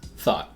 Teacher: my tongue is where the T should be made, but I then don't release it.